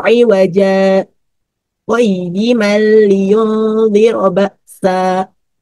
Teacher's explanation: pembaca akan berhenti sejenak tanpa mengambil nafas sebelum kita melanjutkan kepada qayyiman pada ayat kedua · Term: saktah